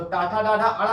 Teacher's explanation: टाठा डाढ़ा अड़ा का उच्चारण स्थान क्या होगा, मूर्धन्य